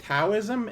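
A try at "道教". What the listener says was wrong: it's not actually pronounced taism well that there you go it's Chinese so it's it's kind of a mix between the D sound and the T sounds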